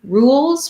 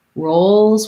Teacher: rules we just have the tense oo sound rolls we have the oh diphthong